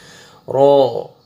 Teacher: را نہیں بولنا، رو کو باریک نہیں کرنا، رو کو موٹا کر کے پڑھنا ہے